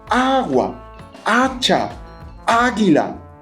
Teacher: Esto solo ocurre con las palabras que empiezan por la vocal A o H, seguida de A, pero que tienen la fuerza, la sílaba tónica, en la primera sílaba